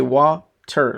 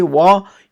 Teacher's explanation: wa, your sound goes up, and then ter, it drops all of a sudden. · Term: two units of pronunciation